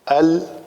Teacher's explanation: یہ حمزہ ہے، یہ پتلے حروف میں سے ہے، اس کو ال کریں گے، ال جو ہے وہ پر ہو جائے گا۔